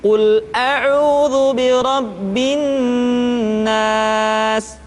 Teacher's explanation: ditahan suaranya ketika mengucapkan nun tasydid seperti ini.